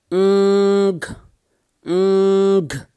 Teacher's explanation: Back of the tongue goes up to the velar. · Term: engma